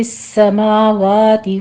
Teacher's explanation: سین کے اوپر آپ نے تشدید ہے، سختی کیجیے اور سیٹی کی آواز کے ساتھ اسے پڑھنا ہے